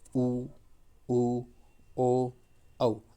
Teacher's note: अपन जब बोलते हैं, अपने होठ है ना जो गोल हो जाते हैं, वर्त के आधार पर हो जाते हैं। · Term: वर्तुलित